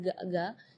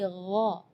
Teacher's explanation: Jadi kalau ga itu dia makhrajnya dari lidah. Ya, tapi kalau huruf ghain itu dari bagian tenggorokan ya. Jadi gha.